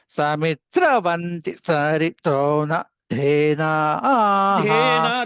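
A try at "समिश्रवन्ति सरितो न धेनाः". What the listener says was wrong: ధే కిందకి వెళ్తున్నదండి సరితోన ధేనా ఆహా ధే మధ్యకి చెప్పాలి సమిశ్రవంతి సరితో నధేనా సరితో నధేనా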